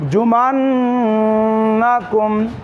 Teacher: নুনে তাসজিদ হওয়ার কারণে ওয়াজিব গুন্না